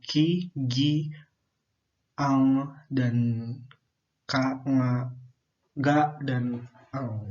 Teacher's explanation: Lalu kemudian ada velar. Nah, artikulator aktif adalah badan lidah dan artikulator pasifnya itu langit-langit lunak